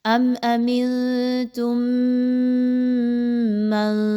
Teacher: آگے چلیے تو میم ساکن کے بعد میم کا حرف آ رہا ہے، اور یہاں پر میم مشدد ہے، تو کیا پتہ چلا کہ آپ نے اس میم کو پچھلی والی میم کے ساتھ مضبوطی کے ساتھ ملانا ہے، اور میم مشدد ہے تو یہاں پر غنہ بھی کیا جائے گا